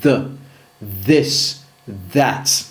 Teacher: Le TH sonore, langue entre les dents avec vibration.